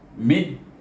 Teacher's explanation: Maka kita idghamkan huruf mim dengan huruf dal. Jadi bunyinya mid, iaitu berakhir dengan qalqalah huruf dal, iaitu di pangkal gusi kita bertentangan dal, kena dal tekankan kat pangkal gigi kacip dengan gusi, iaitu bunyinya mid.